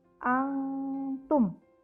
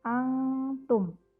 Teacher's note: Nun sukun ketemu dengan ta, maka nun sukunnya dia akan dibaca samar-samar. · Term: ikhfa hakiki